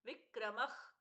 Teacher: विक्रमः ख जैसा प्रश्वास हुआ